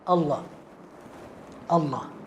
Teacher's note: Hamzah dihilangkan dan lam yang pertama dimasukkan ke dalam lam yang kedua menjadi Allah